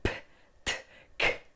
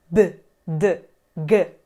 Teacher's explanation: Las consonantes están rodeadas de vocales, que son sonoras y, por eso, tienden también a sonorizarse. ‘P’, ‘T’, ‘K’, sordas porque no nos vibra. En latín pasan a: ‘B’, ‘D’, ‘G’, sonoras porque vibra la garganta